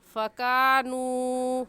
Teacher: वाव मद्दा को 1 अलिफ के बराबर खींच कर पढ़ेंगे और ऐसे कहेंगे फ़कानू।